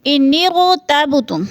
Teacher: انغتبتم، انغ میں جو ہے امالہ والی را ہے، را پر پڑھی جائے گی، اور تب میں قلقلہ ہو رہا ہے